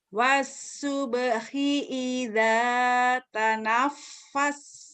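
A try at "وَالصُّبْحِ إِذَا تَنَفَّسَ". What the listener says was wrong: Wasub sod. Dan kol-kolahnya sering ketinggalan sih Ibu. Wasubhi idza tanafas. Tahan napas. Idza tanafas. Coba lagi kol-kolahnya keluarin.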